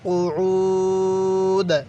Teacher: ওয়াকফের সময় দালটা হালকা করে ধাক্কা দিব, কারণ দালটা তো কলকলার হরফ, এই জন্য ধাক্কা দিয়ে পড়তে হবে।